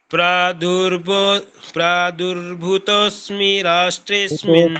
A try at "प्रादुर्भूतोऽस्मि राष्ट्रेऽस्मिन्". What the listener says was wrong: भूतोऽस्मि नहीं, बड़ा भू है। प्रादुर्भूतोऽस्मि राष्ट्रेऽस्मिन् कीर्तिमृद्धिं ददातु मे